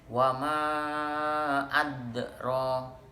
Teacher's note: Atau dalam huruf mat tabi'i ini hamzahnya berada di luar kalimat. Dipanjangkan 4 ataupun 5 harokat, tetapi huruf hamzahnya berada di luar kalimat. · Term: mat jaiz munfasil